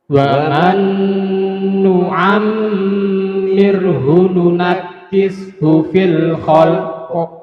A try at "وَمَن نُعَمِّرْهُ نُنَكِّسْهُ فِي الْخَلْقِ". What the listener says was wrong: Fil khalq, bukan khalq ya. Jadi diidharkan dulu baru di qalqalah. Fil khalq. Susah kan kalau terbiasa panjang?